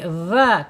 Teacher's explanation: Secara makhraj dzal ini ada di alisan ujung lidah menyentuh ujung gigi seri dza. Keluarkan lidahnya sedikit ya biar tidak jadi za gitu.